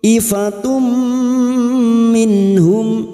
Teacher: Nun sukun bertemu ha idhar halki. Nun sukun dibaca jelas.